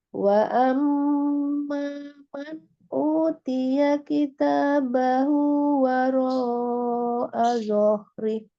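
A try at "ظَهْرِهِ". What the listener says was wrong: Nah, di zohrinya itu Umi jangan naik juga zohnya, tidak zohri. Cuma ditebalkan, jadi tidak dipanjangkan, tapi zohri. Zohri. Zohri. Jadi langsung disukunkan ke H-nya.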